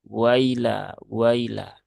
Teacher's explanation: Jadi hamzahnya terayun sehingga terbaca seperti ya sukun